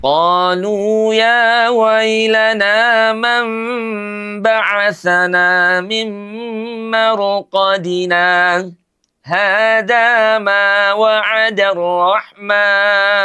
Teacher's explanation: mim marqadina ketika kita baca wasal, maka wajib diputus suaranya sejenak tanpa bernafas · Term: saktah